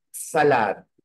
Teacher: en exhalar no es una S, ¿cierto? Es una KS